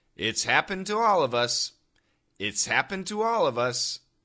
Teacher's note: It's difficult to hear the H in happen and happened to. That D and T go together.